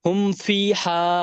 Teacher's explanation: মিম সাকিনের আওয়াজকে বিনা গুণনায় জাহির করে তাড়াতাড়ি পড়তে হবে, একে ইজহারে সাফাবি বলে।